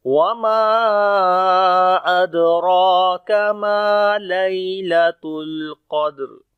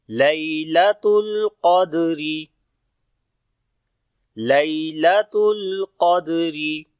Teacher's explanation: دال کے اوپر قلقلہ کریں گے، حروف قلقلہ میں سے ہے، جزم آ گئی ہے اس وجہ سے. را کے نیچے زیر ہے تو باریک پڑھیں گے را کو.